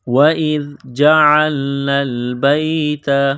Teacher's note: وَإِذْ جَعَلْنَا الْبَيْتَ، واو کو پڑھتے وقت ہونٹوں کو گول کرنا ہے، حمزہ کو زال کے ساتھ پلس کرنا ہے، ملانا ہے۔ زال کو پڑھتے وقت زبان تھوڑی سی باہر نکالیں گے